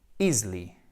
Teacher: Je répète, this disease could be easily, alors pas easily, faites bien attention, là, ce n'est pas un I, c'est un E atténué